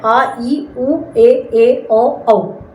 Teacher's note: दीर्घ स्वर होते हैं जिनमें ह्रस्व की तुलना में दो गुना समय लगता है।